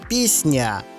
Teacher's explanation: твердий приголосний с пом'якшується під впливом наступного м'якого приголосного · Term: асиміляція